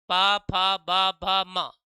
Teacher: इनको जब भी बोलोगे तो ओठ आपस में क्या करेंगे, टच करेंगे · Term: पा वर्ग